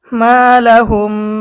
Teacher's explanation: এখানে যদি আমরা দেখি মিম সাকিনের পরে কিন্তু বা এসেছে, মিম সাকিনের ইকফা গুণনা সহ আমাদেরকে পড়তে হবে।